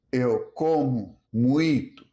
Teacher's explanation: The O becomes U. Unstressed vowels weaken.